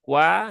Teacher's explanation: Dan waw juga tipis ya. Dia diucapkan dengan monyong dulu